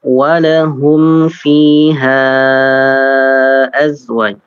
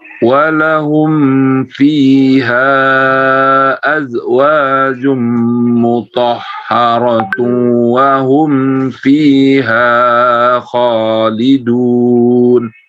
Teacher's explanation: untuk mad jaisnya dipanjangkan lagi sedikit Pak